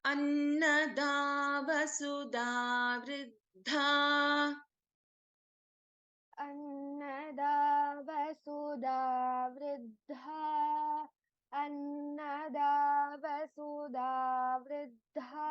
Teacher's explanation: in this verse, we have only one Mahaprana Akshara, which is Mahaprana Dha.